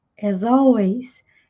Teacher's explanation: L sempre com som de L, não com som de U. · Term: linking sound